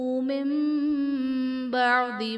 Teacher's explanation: من بعد میں نون ساکن کے بعد حرف با ہے تو یہاں پر نون ساکن کو میم سے بدل کر اخفا کریں گے، یعنی غنہ کر کے پڑھیں گے تو یہاں پر اقلاب کا قاعدہ ہوگا.